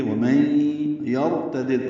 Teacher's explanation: نون ساکن کے بعد یا آنے کی وجہ سے ادغام ہوا ہے، ادغام ناقص مع الغنہ ہے، غنہ کریں گے. ومن یرتدد را پر پڑھیں گے کیونکہ اس سے پہلے زبر آئی.